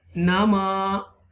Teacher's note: Mim zabar alif ma. You will stretch a little bit because alif madda here.